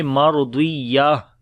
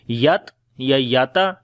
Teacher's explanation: تا ہا بن جاتی ہے اور ہا کے اوپر جزم آ جاتی ہے